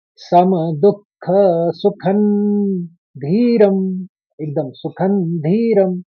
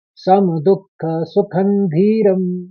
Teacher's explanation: न और म को सम दुख सुखन धीरम एकदम सुखन धीरम हस्व पढ़ना है दोनों को न और म को